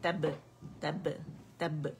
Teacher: باریک با ہے تو باریک قلقل ہوگا